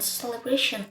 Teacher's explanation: The syllable bra has primary stress while another syllable receives secondary stress. A secondary stress helps create smoother rhythm in long words.